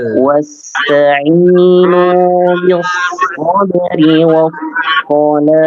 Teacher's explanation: Ya, huruf shad itu dibaca tebal ya. Kemudian lam bis-shalah, hati-hati jangan sampai lamnya dibaca tebal.